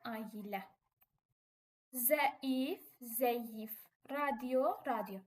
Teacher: tələffüz etdikdə bu hərflərin arasına y samiti əlavə olunur